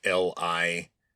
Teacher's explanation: you have to say that I sound with a very low tone. It's the third tone in Mandarin Chinese.